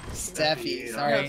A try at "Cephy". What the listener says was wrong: Cephy, like Cephalon, Cephy? I thought you said Cephalon. Then it sounded like you said Steffi, like Stephanie.